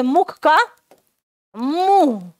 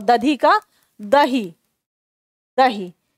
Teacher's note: तो धा का हा में परिवर्तन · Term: महाप्राण का हा में परिवर्तन